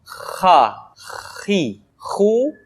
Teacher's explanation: haniha selanjutnya adalah huruf ha Kho dikeluarkan dari pangkal tenggorokan ha pangkal tenggorokan diucapkan dengan mengalir nafas